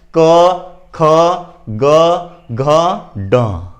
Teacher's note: जो ध्वनियां कंठ से निकलती है, जो वर्ण कंठों द्वारा ध्वनि निर्गमित होती है उसे हम कंठ वर्ण कहते हैं।